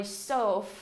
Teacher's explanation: Và chúng ta sẽ đọc cái từ surf này như thế nào, âm S nè. Âm ơ chúng ta kéo dài ra đọc sâu vô các em.